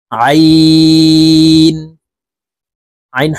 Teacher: আইন হরফ হলকের মধ্যখান থেকে চাপ দিয়ে উচ্চারণ করব, কারণ আইনের মাখরাজ হলকের মধ্যখান থেকে হবে